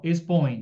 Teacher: desce do o para o e por isso que é decrescente